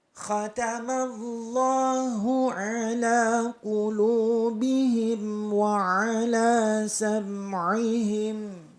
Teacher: ain letaknya di tenggorokan bagian tengah, ditekan. Ala qulubihim wa ala di tenggorokan bagian tengah ditekan.